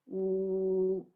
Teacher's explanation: E nos lábios, então, nós temos o U. Olha só, tem que fazer o biquinho para falar. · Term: labial